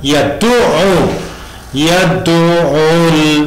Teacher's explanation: Yang perlu diperhatikan tekanan kata pada yad'u, ain tasdid, ainnya ditasdid atau sadda. Tasdid itu artinya tad'if, jadi hurufnya dilipatkan dua, lipat dua, bertasdid.